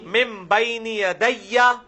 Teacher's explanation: یہ وہی اقلاب آ گیا، نون ساکن کے بعد با ہے تو نون میم میں بدل جائے گا